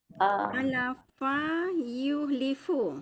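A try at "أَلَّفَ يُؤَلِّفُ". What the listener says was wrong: Okey, ada sabdu. Alafa.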